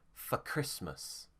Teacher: can often become once again when it's a function word so if for is not stressed it will become fur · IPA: ə